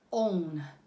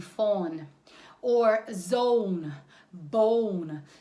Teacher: we need o plus u when we make that sound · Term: two vowels